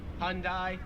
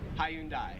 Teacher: americans make it like two syllables like hyundai australians three syllables hyundai